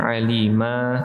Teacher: Alima, di sini mimnya panjang, alima, jangan sampai melebihi dua harakat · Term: mad 'iwad